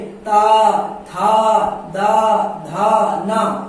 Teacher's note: फिर ता वर्ग में ता, था, दा, धा, ना, आप चाहे मुंह से बोल के समझ लीजिए। ता बोलोगे जो दांत में आपकी जीभ जाती लटकती है ना, तो ये आपका दंत से उच्चारण हो रहा है, ली दंत से होगा, तावर्ग होगा।